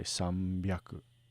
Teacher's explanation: And H sometimes goes to B, as in san plus hyaku equals sambyaku. Note also that the n at the end of san changes to a little bit of an M sound to kind of blend in with the B. Sanbyaku is a little harder to say, so we say sambyaku.